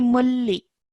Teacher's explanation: So this is mulli because again, the rule of idgham kamil would be applied over here because after this tanween, it's a lam shaddad. So because it is a lam shaddad, no nasal sound will be produced in between this, okay? So we'd straight away say mulli like that, okay?